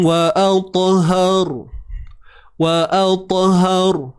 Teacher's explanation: Jadi sebabkan ha berbaris atas itulah yang menyebabkan ra perlu dibaca dengan sifat yang tebal. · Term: tebalkan ra